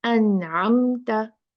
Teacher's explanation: यहां पर नून को साफ पढ़ना है कुछ गुन्ना गुन्ना गड़बड़ नहीं करनी